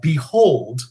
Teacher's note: because the emphasis is on hold not behold